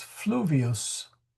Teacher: fluvius. Where is the accent? It's on the U. It's never on the last vowel. It may be on the second vowel if the second vowel is long, right?